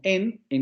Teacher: O tenemos palabras como en donde solo tenemos una coda. Tenemos el núcleo silábico, que sería la vocal semicerrada anterior no labializada, y luego tendríamos la coda con la nasal alveolar sonora